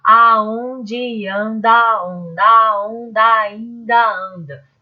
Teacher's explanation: Tem sempre uma sílaba fraca, uma forte, uma fraca, uma forte, uma fraca, uma forte. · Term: sílaba tônica